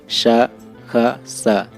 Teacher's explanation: अघोष ध्वनियों के उच्चारण में स्वर तंत्रियां दूर दूर रहती हैं और वायु स्वर तंत्रियों में बिना कंपन के निकल जाती है। व्यंजन वर्ग का पहला, दूसरा और ऊष्म वर्ण का श, ख, स अघोष वर्ण है।